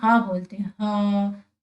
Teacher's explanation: जैसे कि हम हा बोलते हैं, हा, तो हमारी आवाज कैसे आ रही है, कंठ से आ रही है, कंठ के भीतर से आ रही है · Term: स्वर यंत्रीय